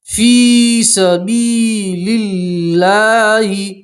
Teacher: اللہ کے لام سے پہلے زیر ہے تو اللہ کا لام باریک پڑھیں گے